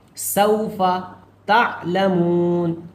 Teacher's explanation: سین میں واو مل رہا ہے اس لیے اس کو نہیں کھینچیں گے، جلدی سے ادا کریں گے